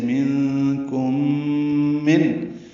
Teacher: منکم یہ اخفا ہے نون ساکن کے بعد کاف آنے کی وجہ سے، اور میم ساکن کے بعد میم آنے کی وجہ سے ادغام ہے، غنہ ہوگا. · میم ساکن کے بعد میم آنے کی وجہ سے ادغام ہے، غنہ ہوگا. ادغام مثلین، ادغام شفوی کہتے ہیں اسے. · دوسرے من میں نون ساکن کے بعد حمزہ آنے کی وجہ سے اظہار ہے، اظہار حلقی